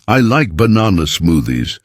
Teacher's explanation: Did you hear how banana has the stress in the middle